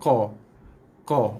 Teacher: qa keluar bunyinya daripada kawasan pangkal lidah